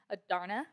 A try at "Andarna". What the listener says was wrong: Andarna. I think it has an N.